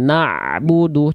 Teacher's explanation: ain punya sifat namanya tawasud. Tawasud itu sedikit mengalir suaranya.